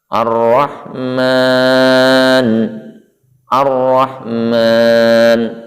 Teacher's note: Di huruf ra terdapat tasdid, maka suara al atau alif lam sebelumnya hilang atau lebur.